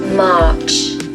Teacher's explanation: if you want a British accent, don't pronounce the R. As you can see, the R comes after a vowel, and that is generally when we don't pronounce the R.